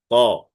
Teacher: ক হরফ মোটা আওয়াজে এক আলিফ টেনে পড়তে হবে